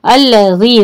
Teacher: ज़ाल के लिए ज़बान थोड़ी सी बाहर